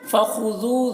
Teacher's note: ज़ाल को बारीक पढ़ना है और खा को पुर पढ़ना है और यहाँ पर वाव मद्दा है।